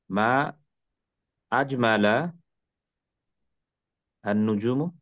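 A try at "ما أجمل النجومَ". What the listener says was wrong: না, মু না, মা। এই লাস্টে মানসুব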